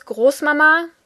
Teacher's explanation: it is pronounced with the emphasis on the second a